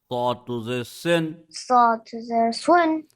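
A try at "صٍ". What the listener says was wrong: There should be no twist in the sound. Do not make your lips. Do not change the position of your lips. Saw to the sin.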